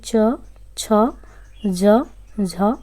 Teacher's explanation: जैसे च, छ, ज, झ स्पर्श संघर्षी व्यंजन है